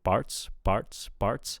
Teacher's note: I'm kind of hearing an unaspirated p, which sounds like a b